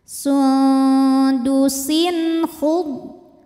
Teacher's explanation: tanwin menghadapi huruf halqi atau tenggorokan yaitu kho. Cara bacanya tanwin dibaca n, jelas.